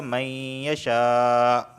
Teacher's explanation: اسے میں 4 الف کے برابر کھینچ کے پڑھ رہا ہوں کیونکہ ایک ہی کلمے میں حمزہ مدہ اور حمزہ واقع ہوئے ہیں۔ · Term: مد متصل